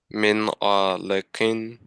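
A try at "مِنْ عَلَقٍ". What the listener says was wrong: Okay, brother, when you will see there is a fatha or kasra dhamma, don't strike them. Just say them quickly. Min alaqin. So tell me, will we be doing gunna here? Yes, no. What? Why no? Ain is a?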